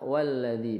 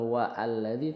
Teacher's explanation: kalau semisal alladzi ini di tengah jatuhnya walladzi bukan wa alladzi tapi walladzina